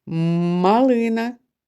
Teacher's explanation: А у словах машина метелик муха малина перший звук м твердий приголосний